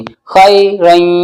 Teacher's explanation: जैसे मद्दे मुत्तसिल में हमजा दूसरे कलमे में आता है, यहीं पर भी, यहाँ पर भी दूसरे कलमे में आएंगे, ठीक है। तो अब इदगाम नाकिस होगा, नाक में आवाज गूंजेगी